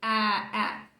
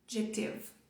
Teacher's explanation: a mistura do A com E, que não é nem A nem E, tá ele no meio